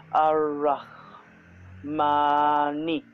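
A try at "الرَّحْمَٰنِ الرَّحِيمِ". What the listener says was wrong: Nir-Rahim. Because there is Shadda on Ra, so we have to join it with previous vowel. Nir, Noon Kasra, Ra Shadda Nir. Nir-Rahim. Rahim.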